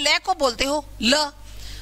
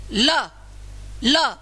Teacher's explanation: ल को बोलते समय आपकी जो जीभ है वह मुंह के अंदर बीचोबीच अड़ के खड़ी हो जाएगी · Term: पार्श्विक वर्ण